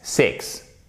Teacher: C'est un I court ici. C'est presque comme un E accent aigu, ok? E.